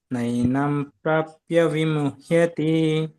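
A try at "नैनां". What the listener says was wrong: ನೈನಾಂ ಪ್ರಭುಜಿ ದೀರ್ಘ ಇದೆ ನೈನಾಮ ನೈನಂ ಅಲ್ಲ ನೈನಾಮ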